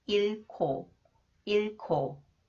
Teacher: The consonant 기역 comes after the final consonants 리을, 히읗. It combines with 리을, 히읗 to be pronounced as 크 sound.